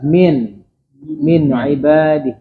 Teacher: ada nun sukun depannya ketemu ain. Maka nunnya diperjelas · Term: izhar